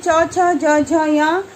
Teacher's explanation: उच्चारण स्थान इसका है तालु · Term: चवर्ग